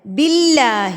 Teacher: اللہ لفظ سے پہلے جب زیر آ جاتی ہے تو اللہ لفظ کو باریک پڑھا جاتا ہے.